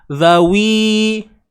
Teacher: Okey, wi ni jangan panjang tuan-tuan. Dhawi. Asalnya memang macam tu, dhawi.